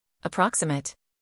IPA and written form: əˈprɒk.sɪ.mət (Approximate)